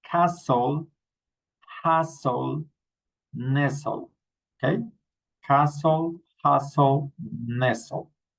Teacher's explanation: remember we don't pronounce the t.